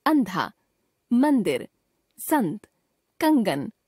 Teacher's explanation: अनुस्वार का उच्चारण करते समय हवा नाक से बाहर आती है